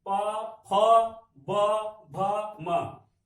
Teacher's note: ओष्ठ ध्वनि, ये आपका बिना ओठ से सटे नहीं बोल सकते, चाहे बोलने की कोशिश करके देख लीजिए कि आप जो है प बिना दोनों ओठों को सटे नहीं बोल पाएंगे। प, फ, ब, भ, म, ये आपकी ध्वनि।